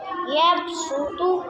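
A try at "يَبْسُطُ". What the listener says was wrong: यब बा को कलकला करें यबसुत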